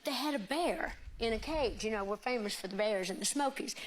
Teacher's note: I was told to listen for a sh sound on the S's.